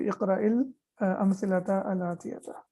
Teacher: when we connect sakin, we connect it with kasra